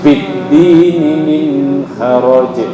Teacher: Nun mati bertemu dengan ha, idhar halki, nggak boleh dengung.